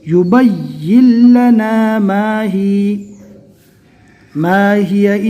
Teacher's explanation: با کو یا سے ملانا ہے اور یا کو ڈائریکٹ لام سے ملانا ہے، بیچ میں نون کو چھوڑ دینا ہے